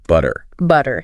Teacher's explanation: Almost a D sound instead of a hard T. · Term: the flap T